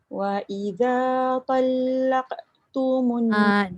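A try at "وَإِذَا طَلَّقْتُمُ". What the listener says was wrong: Dia punya lantunan tu jangan talaq. Jangan laq. Gitu. Lembut kan? Wa idza talaqtumun. Qalah qaf tu, pandai tak buat laqa. Laqa. Dia jangan laq. Dia jadi ketat tu. Wa idza talaqtumun laqa.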